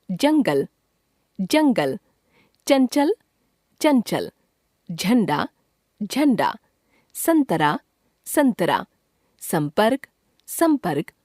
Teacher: अं को अनुस्वार कहते हैं जिसका उच्चारण नाक से होता है।